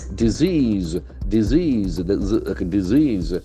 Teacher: The accent falls on the second syllable.